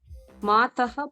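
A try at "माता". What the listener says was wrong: Not Mataha is not there. Mata. ಮಾತಾ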